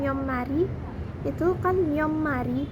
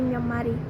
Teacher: bunyi akhir tiet itu akan berubah menjadi miem karena diikuti oleh bunyi m. Jadi maka dari itu pelafalannya pun berubah menjadi myeommari. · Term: perubahan bunyi morfofonologi